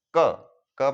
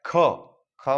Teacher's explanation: क में कम प्राण लगता है, ख में अधिक प्राण लगता है, इस पर जोर लगाना पड़ता है। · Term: अल्प प्राण